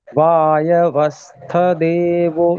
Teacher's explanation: स्थ के बाद में तुरंत देवो शुरू करना है। उसमें एक ही मात्रा है तो एक ही मात्रा बोलनी है।